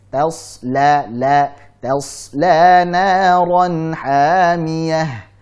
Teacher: Tasla. Jadi tas, tipiskan dulu taknya, kemudian shadnya ditebalkan dan dialirkan